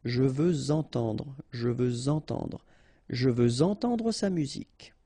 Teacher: Okay, remember we had the same rule. Even if we've got this X at the end, well, with the liaison it will sound like Z.